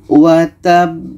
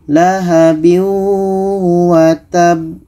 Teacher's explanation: Ba mati diiringi tasydid, itu qalqalah akbar. Kita pantulkan. Kita berhenti 2 detik, setelah itu pantulkan.